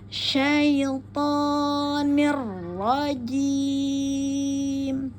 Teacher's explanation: Jim Tengah lidah dengan langit-langit